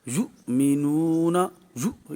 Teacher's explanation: حمزہ ساکنہ کو جھٹکا دے کر پڑھتے ہیں۔ یؤمنون، یو یہاں پر جھٹکا دیں گے۔